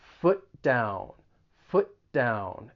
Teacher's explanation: you're really going to say foot and then move right into that d sound in down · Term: co-articulation